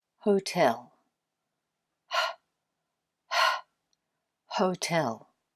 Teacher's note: In English, all we have to do is breathe and we've pronounced the H. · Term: H sound